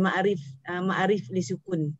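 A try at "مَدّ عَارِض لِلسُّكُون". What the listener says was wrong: Ya, okey, ma'arif. Cara sebut dia bukan ma'arif ya. Dia bukan arif, bukan RIF bukan ya. Rid tu RIDH tahu, bukan RIF. Ya, rid. Ma'arif.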